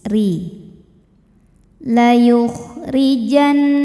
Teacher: huruf ro ya dibaca secara tarqik sebab ro berharakat kasrah maka dibacanya tipis